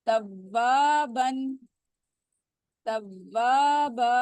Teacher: تو ظاہر ہے الف مدہ ہے تو اس کو ہم مد کو 2 کاؤنٹ اسٹریچ کریں گے